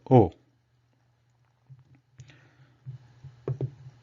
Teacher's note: the tongue retains the natural relaxed position, and the lips are making a small circle